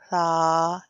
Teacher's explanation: सा में जुबान का सिरा मतलब आप इसको कह लें कि नोक को ही जरा सा फैलाएं तो वह सिरा बन जाता है जुबान का सिरा और ऊपर के दांतों के अंदरूनी किनारे से अदा होता है। जुबान के सिरे को हम जो ऊपर के दो फ्रंट के दांत हैं उसके अंदर वाली साइड पर टच करते हैं तो इसका साउंड निकलता है